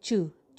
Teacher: जब वर्ड के अंदर आता है तो वो जू और चू की दरमियानी सी आवाज़ आती है, चू चू टाइप की आवाज़ आती है।